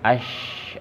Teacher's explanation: antaranya adalah jahr jadi jelas terang Pakem jadi a kemudian syin salah satunya tafassyi berkumpulnya udara di rongga mulut